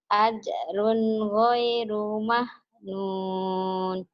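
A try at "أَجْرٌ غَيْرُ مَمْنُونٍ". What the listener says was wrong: Jangan mam itu mah. Ajrun ghairu mamnun, bukan mahnun ya, mamnun ya. Ajrun ghairu mamnun.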